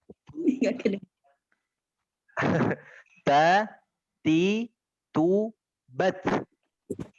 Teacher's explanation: Jadi ada angin, ada nafas yang keluar sedikit di huruf ta-nya.